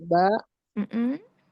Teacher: Ba itu asyafatan. Iya. Dengan merapatkan kedua bibir.